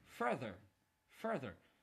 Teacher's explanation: the word is fur there and because of the accent mark you have to stress on fur